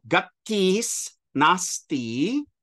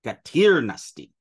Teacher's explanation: When our s encounters a voiced initial, any voiced initial, it turns into a ra. So you get gatirnasti.